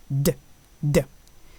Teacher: In Arabic, it is denti-alveolar